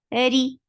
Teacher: Ri for kasra, give E sound, and ra is light.